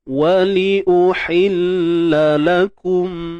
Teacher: Bila kata ha pedas, kena pedaskan dia lah. Okey, tengah kerongkong ni kita sempitkan hi.